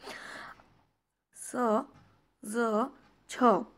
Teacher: जीभ आपली दाताला स्पर्श करते आणि मग उच्चार तयार होतो. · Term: डेंटल